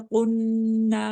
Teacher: Block number 4 में देखिए, वलन तफ़अलू, long इख्फा कर रहे हैं नून के आगे, और फिर इख्फा में से ता आगे, इसे मैं उसको इख्फा के साथ पढ़े, वला तफ़अलू फत्तकुन, काफ को बोल्ड पढ़ रहे हैं, मोटे रूफ में से है ये। नून के ऊपर गुन्ना कर रहे हैं, नून मुशद्दद है